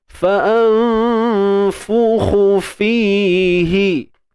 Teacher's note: Nun mati bertemu fa ikhfa jangan sebut nun tepat pada makhrajnya. Sembunyikan nun. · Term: Ikhfa' haqiqi